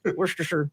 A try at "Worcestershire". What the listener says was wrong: Worcestershire. Like you bailed out halfway through.